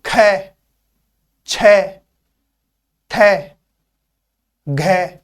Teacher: अगर हम इनका उच्चारण करें तो इनके उच्चारण में हवा बहुत अधिक निकलती है। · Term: महाप्राण